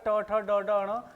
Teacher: जिनको उच्चारण करते समय हमारी जीव मुड़ती है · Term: मुर्दा